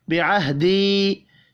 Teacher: या के ऊपर छोटी मद है, 3 अलिफ के बराबर खींच कर पढ़ेंगे।